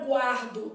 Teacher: Eu tenho um ditongo crescente formado por u a